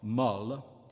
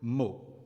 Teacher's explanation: o is open in the feminine adjective meaning soft mullah and closed in the word meaning word mo